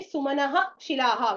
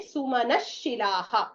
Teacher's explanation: When we chant it together, we will not say Sumanaha shilaha. We will say Sumana shilaha because Visarga will become Shakara.